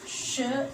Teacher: the tip and blade of the tongue against the teeth ridge, and the front of the tongue is raised towards hard palate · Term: palato-alveolar sounds